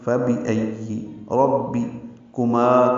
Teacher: کاف باریک ہے، جلدی اور نرمی سے پڑھیں گے